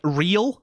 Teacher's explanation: the L phone is one that you form by placing the tip of your tongue behind your teeth, like your upper row of teeth